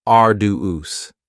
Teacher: arduous has 3 syllables, and the stress is on the first syllable, arduous. Now, you don't hear that D sound that much.